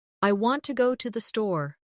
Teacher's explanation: The stress is on want and store. The words to and the are much softer. This creates the rhythm of English.